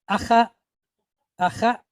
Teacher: Katef patach, shorter, reduced form of short A.